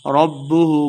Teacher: ربہ با مشدد ہے. را کو با کے ساتھ ملا کے پڑھنا ہے